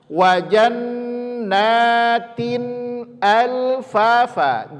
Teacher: tanwin bertemu hamzah, maka izhar cara membacanya, tidak boleh didengungkan